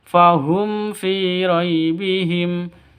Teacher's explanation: Di sini ada mim mati bertemu dengan fa, jelas, terang, tidak boleh dengung, tidak boleh panjang. Kenapa? Karena izhar safawi, jelas.